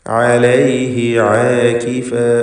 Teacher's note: തൊണ്ടയുടെ മധ്യമാണ് ഐൻ എന്നത് പ്രത്യേകം ഓർക്കുക